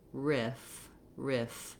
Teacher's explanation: And then you have the I vowel, which is like the same as in did or this, where you want to be able to just have a lax front high vowel. And then you're closing your upper teeth and lower lip together to make that continuing sound. If that's hard, you can start with just if and then add your R, riff, riff.